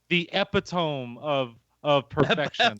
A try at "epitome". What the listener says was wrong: Epitome? I think you put the wrong emphasis on the wrong syllable.